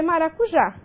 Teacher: Então, veja, última sílaba tônica, terminada em A, ela será acentuada graficamente.